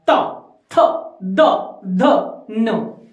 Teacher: वर्ग त वर्ग में क्या है जीभ का ही प्रयोग त इसमें आपकी जीभ का अगला हिस्सा ऊपरी दांत में फटाफट टच मार रहा है